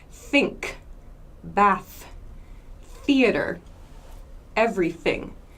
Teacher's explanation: so here I'm not using my vocal cords I'm making like an air sound only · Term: unvoiced th